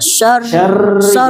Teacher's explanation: Jangan terlalu banyak getarannya, jangan terlalu banyak.